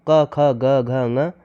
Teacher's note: उच्चारण स्थान जो कंठ कंठ जो उच्चारण स्थान होता है वह क ख ग घ ये कंठ से उच्चारित होते हैं। · क, ख, ग, घ, ङ, ये कंठ से उच्चरित होते हैं।